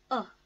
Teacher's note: is a very feeble sound phonetically we call it schwa sound it is a very low ah sound